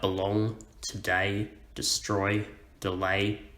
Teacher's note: an unstressed syllable followed by a stressed syllable · Just like belong, today, destroy, delay, we stress the second syllable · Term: iambic foot